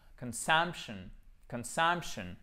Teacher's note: Et là, vous voyez, votre O, il est prononcé comme un schwa, c'est-à-dire notre E atténué.